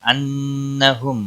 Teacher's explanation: انہم نون مشدد پر غنہ ہوگا، میم ساکن کے بعد دوسرا میم آیا ہے، میم مشدد، یہاں پر اخفائے ادغام شفوی ہوگا، غنہ کے ساتھ پڑھیں گے۔